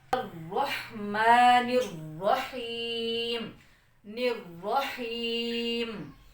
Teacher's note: یہاں پر نون آ رہا ہے الرحمن الرحیم، یعنی زبان کی کنارے کی جو پشت ہے یہ زبان کی نوک ہے اور یہ تھوڑا سا آگے کو کر کے زبان کی پشت ہوتی ہے۔ اس کو ہم نے اوپر والے 3 دانتوں کے مسوڑوں سے لگا کر پڑھنا ہے نون کو، سیم ویسے ہی جیسے ہم را کو پڑھیں گے۔